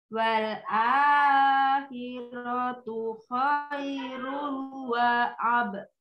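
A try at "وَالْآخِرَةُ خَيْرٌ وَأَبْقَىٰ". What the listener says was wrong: Coba wal a-nya tidak boleh terlalu panjang. Wal a wal akhiratu khairun wa abqa.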